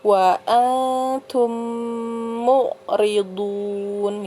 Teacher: Jadi mim sukun bertemu dengan mim, ya. Jadi memasukkan ke huruf berikutnya, ya, ke huruf mim itu disertai dengan dengung. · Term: idgham mimi